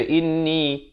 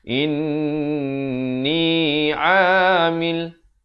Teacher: Wajibul gunnah 2 harakat dengung. Jangan baca inni.